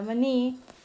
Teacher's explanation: La palabra maní, su mayor fuerza de voz recae en la última sílaba. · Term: palabra aguda